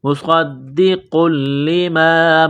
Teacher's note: قاف کو لام کے ساتھ ملانا ہے قاف کو موٹا کرنا ہے · اللہ کے نام کو باریک کرنا ہے عند اللہ مصدق لما صاد میں سیٹی کی آواز پیدا کریں گے صاد کو موٹا کرنا ہے